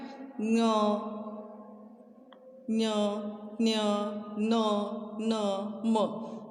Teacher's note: तो हम ये नाक से, यानी हमें जब बोलते हैं तो नाक में से ये शब्द आते हैं, तो इसीलिए अनुनासिक पंचमाक्षर इसे कहते हैं। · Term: नासेल लेटर्स